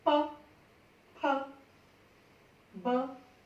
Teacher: आप इधर देखिए, होठ आपस में टकराएंगे तो ये आवाज निकलेगी, ठीक है। ध्वनि जब आप ये निकालेंगे तो हवा भी बाहर की तरफ आपको लगेगा निकल रही है, ठीक है ना, होठों से टकराते हुए